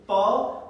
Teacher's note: और जब रुकावट आ जाती है, लाइक व्हेन वी प्रोनाउंस प, अगर थोड़ा सा स्लोली से बोले प, पहले लिप्स फोल्ड होते हैं, उनके अंदर हवा भरी जाती है, और फिर जब वो खुलते हैं तो वो हवा बाहर निकलती है, देन द प साउंड इज प्रोनाउंस्ड.